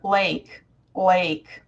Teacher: you touch behind your teeth with the tip of your tongue but you go to the side of your mouth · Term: dark L